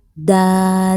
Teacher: da ini ada huruf mad yaitu alif, sebelumnya harokat fathah maka ini dibaca 2 harokat